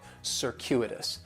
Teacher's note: And circuitous has 4 syllables, and there's a few things going on with the pronunciation. In the first syllable, that C is going to have more of an S sound